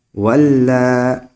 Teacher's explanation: ابھی مد زیادہ نہیں کریں گے کیونکہ اس کی حرف مد کے بعد ابھی حمزہ نہیں آیا ہے